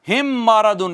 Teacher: میم ساکن آئی، میم ساکن، میم ساکن کے بعد ایک اور میم آ گئی، ایک اور میم آ گئی۔ میم ساکن کے بعد میم ہو تو میم کا میم میں کیا کر دیتے ہیں؟ ادغام کر دیتے ہیں، اور اس ادغام کو کہتے ہیں ادغام میں شفوی۔ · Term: ادغام شفوی